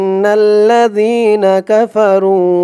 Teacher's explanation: হামজা দিয়ে এই নুন ধরবে, এখানে ওয়াজিব গুন্না হবে, হরকতের পরে নুনের উপরে তাসদীদ। ইন, নুন দিয়ে পরের লাইনে তাসদীদ ওয়ালা লাম ধরবে, নুন লাম জবর নাল, ইন্নাল, লাম জবর লা, ইন্নাল্লা, রি এক আলিফ টান, জেরের পরে ইয়া সাকিন।